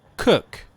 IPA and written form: kʊk (cook)